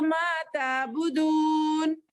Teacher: थोड़ा खींच रहे हम एक अलिफ के बराबर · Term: हुर्फे मद्दा